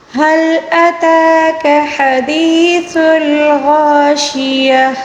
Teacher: حدیث الغاشیہ، وقف کے دوران گولتا کو گول ہا کے ساتھ تبدیل کر کے پڑھیں گے